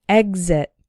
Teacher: the x is followed by a vowel sound but the first syllable is the strong one exit but we still pronounce the X like G exit this